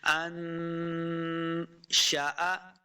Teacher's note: نون ساکن کے بعد آگے حروف اخفا سے شین ہے تو یہاں پہ ہم نے اخفا کرنا ہے، یعنی غنہ کر کے پڑھیں گے۔ انشأ، شاء، شین اور حمزہ کو لمبا نہیں کریں گے۔